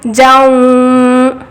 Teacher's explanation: اب یہاں پر تنوین کے بعد یا واو میم نون میں سے واو آیا، ادغام مع الغنہ کا قاعدہ ہوگا، جیم کو واو سے ملائے، جیم واو زبر جاؤ، اب یہ آواز کو غنہ کریں گے